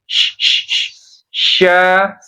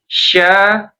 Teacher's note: Dia bukan huruf bibir, dia huruf tengah lidah. Ya, tetap bibirnya biasa saja. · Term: syin